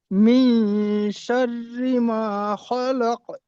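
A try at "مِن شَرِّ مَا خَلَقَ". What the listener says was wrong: এই মেয়ে কেন ইকফা করছেন আপনি? ইকফা হবে? মিন হবে না মে হবে? ইকফা হবে না গুণ? ইকফা করে পড়তে হবে। মিন মিন করলে হবে না জি।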